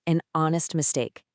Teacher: The H is completely silent, leaving us with a clear, strong o vowel sound right at the front of the word. Silent letters will always shift the article.